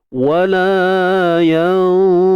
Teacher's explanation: Baru keluar hujung lidah ketika kita sebut za baris depan tu.